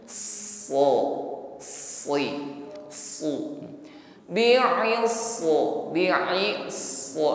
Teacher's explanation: Jadi selain tebal bunyi huruf shad ini, shad juga memiliki sifat sofir, gitu. Ada bunyi desis yang mengalir sebelum shad ini terucapkan.